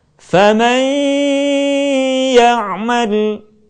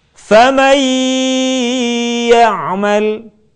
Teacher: Selanjutnya, kesempurnaan di dalam membaca gunnah ketika kita mampu mengeluarkan sebagian suara kita melalui rongga hidung. Contoh, kalimat faman ya'mal akan lebih sempurna kalau sebagian suara kita keluarkan melalui rongga hidung